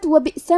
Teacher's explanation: کلمت وبئس میں حمزہ پہ جزم ہے تو ہم حمزہ کو ظاہر کریں گے اور حمزہ کی ادائیگی حلق کے نیچے والے حصے سے ہے